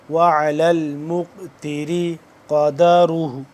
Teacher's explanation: قاف یہاں پہ قلقلہ ہو رہا ہے کیونکہ قاف ساکن ہے